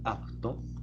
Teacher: en la palabra apto se utiliza el fonema p sin embargo en la pronunciación se suele utilizar el fonema be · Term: neutralización